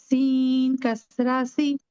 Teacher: सीन में सीटी आ गई।